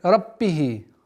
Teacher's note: Вот, при неполноценном произношении звука б появляется звук п. Раббихи. И нужно усилить давление на губы. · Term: звук б